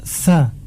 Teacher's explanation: makhraj dari huruf sa ini adalah disebutkan ujung lidah dengan ujung 2 gigi seri atas. Ujung 2 gigi seri atas.